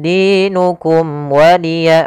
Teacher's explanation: ada mim mati bertemu dengan huruf waw, maka suara mimnya harus dibaca dengan jelas, tidak boleh tahan karena dia bertemu dengan huruf waw. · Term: izhar syafawi